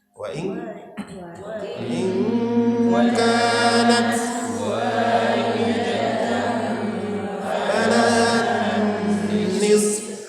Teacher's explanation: Falahan itu berdengung atau gunnah.